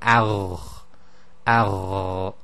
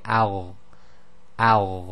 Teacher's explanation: this is a stoppage of breath, so there's no sort of breath released at the end, but it's a slight continuation of the sound